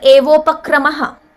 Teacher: This is a Guna Sandhi where Eva and Upakramaha, these are the 2 padas, where Eva ends in A and Upakrama begins with U. A and U are replaced by O.